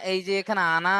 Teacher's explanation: আনা নন আলিফ জবার নাকে কেউ টান দেবেন না